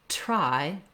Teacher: when you're saying something like a T and an R, try, you need that burst of air. But if you have trouble making that burst of air, it's going to sound more like dry.